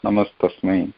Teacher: namaha plus tasmai that visarga becomes namastasmai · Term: visarga sandhi